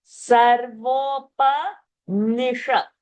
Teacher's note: Shakara is a murdhani shakara.